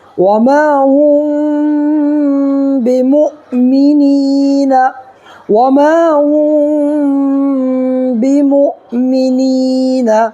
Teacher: میم ساکن کے بعد با آئے تو گنہ کے ساتھ اخفا ہوگا ، ٹھیک ہے، گنہ بھی کریں گے اور اخفا بھی کریں